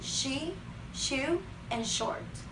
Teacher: The sh sound is also unvoiced, and to create it, the air is forced between a wide groove in the center of the front of the tongue and the back of the tooth. The lips are kept tense, and the words with the sh sound could be she, shoe, and short.